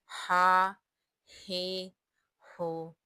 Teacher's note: ہا کا مخرج وسط حلق ہے، یعنی حلق کا درمیان والا حصہ